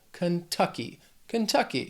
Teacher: This word has 3 syllables. Stress is on that second syllable.